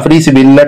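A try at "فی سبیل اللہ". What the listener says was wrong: फ्री नहीं, फी सबीलिल्लाह।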